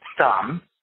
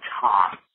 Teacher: the first one was very soft I could just barely hear the second one I heard a little bit of an explosion